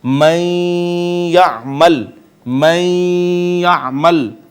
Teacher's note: یا ماقبل کو اپنے اندر ضم کر لے گی یعنی اس کو اپنے اندر پیوست کر لے گی۔ جب نون کا یا میں ادغام ہوگا تو یا کے اوپر شد آ جائے گی۔